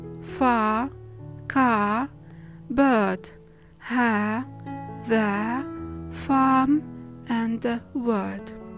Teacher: When the R comes in the middle of a word and also it's preceded by a vowel sound, you should drop it. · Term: non-rhotic R